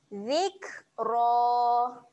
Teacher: ro ketika berbaris atas keadaannya ro yang tebal kita baca dengan ra tebal okey jadi bunyi dia adalah ro